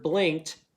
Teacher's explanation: So in this word blinked, that ED makes a T sound.